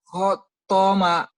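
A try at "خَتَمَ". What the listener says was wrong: khotama, bukan khotoma ya, khotama. Khotama, kemudian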